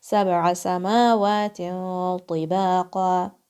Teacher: Mim is, you're going to stretch it 2 counts.